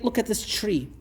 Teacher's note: in various New Yorker accents they would say look at this tree what happened right there it's palatalization